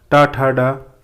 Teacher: ये मूर्धा व्यंजन है, याद रखेंगे।